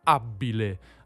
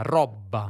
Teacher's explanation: la /b/ tra due vocali, che in tutto il centro-sud raddoppia